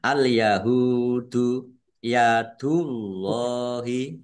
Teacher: Ha domah wau sukun mad thobi'i panjang dua harakat. Allahnya dibaca tebal karena harakat di depannya dumah